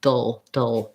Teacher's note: There's a little bit of a schwa in there, ladle, little, but mostly I'm going from the D, dropping the back of my tongue down into the schwa position and leaving the front of the tongue up for the L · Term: dark L